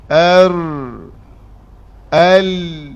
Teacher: lam dan ra ada melencong ni hujung ni perasan tak hujung hujung ra mati dan hujung lam mati tu dia ada melencong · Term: inhiraf